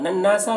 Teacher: نون مشدد غنہ ہوگا اور الف مدہ ہے